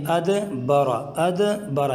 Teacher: ادبر، یہاں دیکھیں دال کے اوپر جزم ہے، اور دوسری بات یہ ہے کہ دال حروف قلقلہ میں سے بھی ہے، اور حروف قلقلہ میں سے ہونے کے ساتھ ساتھ اس کے اوپر جزم ہے، تو اس میں قلقلہ کر کے پڑھیں گے